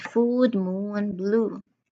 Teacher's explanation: Uh the ooh sound you hold you hold it a bit unlike the short vowel ooh sound that was mentioned earlier. So the ooh sound is held a little bit more